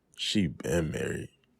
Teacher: The stress on been indicates that the marriage began in the remote past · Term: stressed been